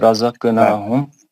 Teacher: قاف ہے نا ساکن اس کا قاعدہ اور ایک ہوگا نا. رزق قاف ہے نا یہ کلکلہ صغرا ہوگا نا اس میں